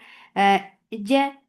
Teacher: don't escape any sound or breath in Jim. This is Majhura letter.